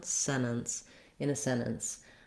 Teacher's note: there's maybe a little bit more of a vowel between the two ends on sentence so that it still has two syllables this has two syllables but it's a stopped stopped in between